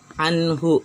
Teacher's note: Karena sebelum huruf hak dhamir ini ada huruf yang berharokat sukun, maka huruf ha ini tidak dibaca panjang.